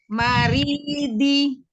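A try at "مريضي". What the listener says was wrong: Roknya ditipiskan lagi. Cuman tadi hurufnya dot. Mesti latihan lagi PR-nya. Di huruf dot.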